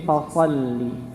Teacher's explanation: Walaupun itu tidak kesalahan fatal ketika memonyongkan, tapi itu kaidahnya kurang tepat ketika menebalkan huruf. Ya, maka menebalkan huruf dengan diangkatnya pangkal lidah